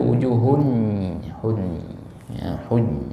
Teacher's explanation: nun sukun langsung dilebur ke huruf ya, tapi masih ada 30% bunyi nun sukunnya atau tanwinnya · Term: nakis